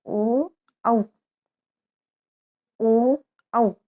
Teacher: कंठ से भी ध्वनि आ रही है और हमारे होठ जो है उनका भी प्रयोग हो रहा है। हम उच्चारण जो है वो होठों से कर रहे हैं। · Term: कंठोष्ठ